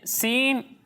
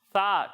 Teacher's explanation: جب ہم سین اور صاد کی ادائیگی کریں گے تو ان دونوں میں سیٹی کی آواز آئے گی، سا میں سیٹی کی آواز نہیں آئے گی